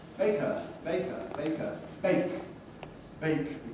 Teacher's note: the voiceless consonant we get pre-fortis clipping before we k bake when we add another syllable baker that has to be squeezing as well into the time available · because of the voiceless consonant we get pre-fortis clipping